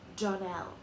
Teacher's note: Accent on the last syllable.